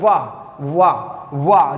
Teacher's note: ये दंतोष्ठ के द्वारा उच्चरित किया जाता है